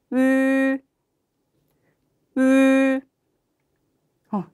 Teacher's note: 입 모양 우 유지한 채로 약간 위라는 생각을 하면서 모양이 끝까지 변하지 않아야 돼요. 입 모양이 변하지 않고 이 소리.